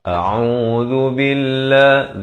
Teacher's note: zal di hujung lidah beri dhammah. Lafz jalalah dibaca nipis, dua harakat.